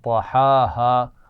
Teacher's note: طحاها، ہا اور ہا اکٹھے آ رہے ہیں. ہا گلے کے درمیان سے یا حلق کے درمیان سے ادا کیا جاتا ہے